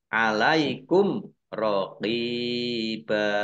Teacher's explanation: Mim sukun bertemu dengan huruf ro, bacaan izhar safawi, dibaca jelas.